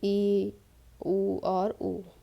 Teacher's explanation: जिन स्वरों के उच्चारण में मुख द्वार लगभग बंद रहता है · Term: समृत